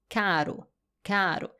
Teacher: Donc, le R, il est au début d'une syllabe. Et là, on va avoir les fameux sons enrolados, un son roulé au bout de la langue.